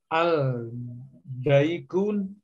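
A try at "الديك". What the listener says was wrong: Adiku ya. Nah, ini alif lam syamsiah apa ya? Jadi lamnya tidak dibaca. Langsung ke dalnya. Adiku ya.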